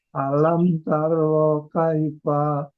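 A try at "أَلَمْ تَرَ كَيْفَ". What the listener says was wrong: Pendek kaki. Tarokai. Alam tarokai.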